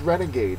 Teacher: Renegade is a noun it's also an adjective the first syllable is the accented one